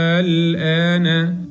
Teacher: عليه علامه المد ايوه موجود هل بعد الف المد همزه لا بعد الف المد حرف اللام الساكن اذا تمد مقدار ست حركات